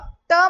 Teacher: ट म्हणलं की टाळूला चिटकतंय